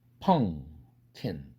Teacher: 그런데 음은 양수음이고 이것은 연구개음이에요. 그러니까 뒤에 나오는 연구개음이 앞에 있는 사운드 양수음에게 나 닮아라. 나처럼 연구개음이 되거라 하는 거죠. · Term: 조음위치 동화